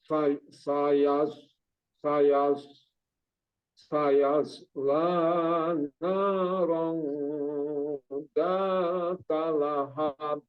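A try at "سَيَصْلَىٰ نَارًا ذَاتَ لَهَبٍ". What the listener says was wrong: Ya, lahabnya cepat di lahabnya nggak ada ayunan di situ. Sayaslana naron zata lahab. Ya, lahab, lahab itu ada pantulannya.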